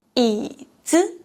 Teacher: if it follows a third tone syllable, it is pronounced as a higher pitch than the syllable before it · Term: neutral tone